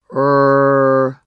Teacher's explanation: R, as in right, is a voiced alveolar approximant.